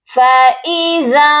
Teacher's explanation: ذال کو نون ساکن کے ساتھ ملائیں گے تو ہم اپنی آواز کو ناک میں چھپا کر پڑھیں گے